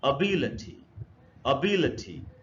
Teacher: The stress is on बी in this word. तो इसको, इस वर्ड को पढ़ना चाहिए अबिलिटी, अबिलिटी।